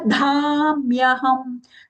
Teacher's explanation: dha mahaprana and long, and that half maya is aghata.